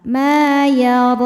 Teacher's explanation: Ma yar dibaca tafhim karena harakatnya di atas maka rnya tebal.